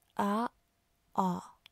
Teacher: Les deux A sont ouverts, mais A est postérieur, je prends derrière A, tandis que A est antérieur.